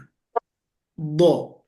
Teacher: Nah, kalau huruf do termasuk huruf isti'la, huruf yang tinggi. Dan do itu letaknya di sisi kiri daripada lidah. Kiri atau kanan atau dua-duanya.